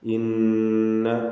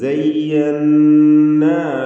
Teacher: ശുദ്ധ നൽകപ്പെട്ട നൂനിന് 2 ഹറക്കത്തിൻ്റെ അളവിൽ ഗുന്ന നൽകുക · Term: നൂൻ മുശദ്ദദ